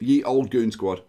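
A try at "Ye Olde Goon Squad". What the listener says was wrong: It's actually the old Goon Squad because the Y used to be called a Thorn, which used to be pronounced as the.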